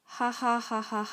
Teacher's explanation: you find nasality in posed laughter